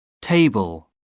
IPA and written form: ˈteɪbl (table)